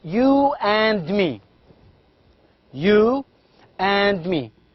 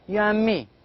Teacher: But in fact, this sound d, the sound d is not pronounced. We do not pronounce d clearly. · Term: elision